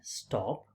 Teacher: Whereas in the word stop, t is not aspirated.